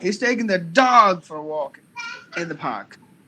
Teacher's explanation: if you put the stress on the word dog he's taking the dog for a walk in the park